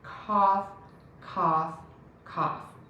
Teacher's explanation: back of the tongue is pulled high up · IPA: /kɑf/